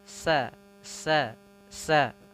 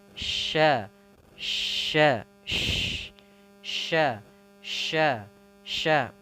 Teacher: Ya, ada disertai dengan sh, sh, sh, sh. Sedangkan kalau sin itu beda, ujung lidah dia mendekati gigi bawah. Sedangkan kalau shin dari tengah lidah kita